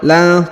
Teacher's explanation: huruf la dibaca 1 harokat ya, la, karena di depan huruf la alif terdapat nun sukun ya